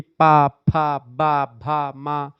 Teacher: ये सब दोनों ओठों के प्रयोग से होता है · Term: द्वयोष्ठ